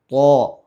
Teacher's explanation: തഫ്ഹീം എന്ന് പറഞ്ഞാൽ നമ്മുടെ വായ മൂടിയതായ രൂപത്തിൽ ഈ ഓപ്പൺ ആകാതെ, ഇപ്പോൾ ത ഇങ്ങനെ ഓപ്പൺ ആകാതെ തോ ഒരു ഗൗരവത്തിൽ ഒരു ഘനപ്പിച്ച് ഉച്ചരിക്കണം. ഇതിനാണ് തഫ്ഹീം എന്ന് പറയുക.